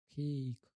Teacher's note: Sound at the end. Okay, a long A starts with E and glides up